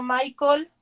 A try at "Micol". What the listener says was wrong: Disculpe, compañera, era Micol, no Michael.